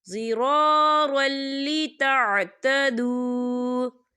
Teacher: وَلَا تُمْسِكُوهُنَّ ضِرَارًا لِتَعْتَدُوا، یا دیکھیں ضِرَارًا، را کے پر تنوین ہے اور تنوین کے بعد لام آ رہا ہے، اور لام جو ہے حروف یرملن میں سے ہے تو یہاں پر ادغام ہوگا، لیکن بنا غننے کے، یہاں غنہ نہیں کریں گے۔